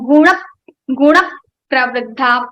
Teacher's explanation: First element of this combination is pa. Pa will be repeated 2 times so that we can put a stress on ra. It will become gunak pravriddha. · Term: putting aghat